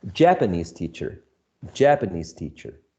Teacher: the first word needs to shift the stress towards uh the initial syllable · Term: stress shift